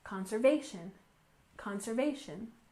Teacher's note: conservation efforts with a stress on the third syllable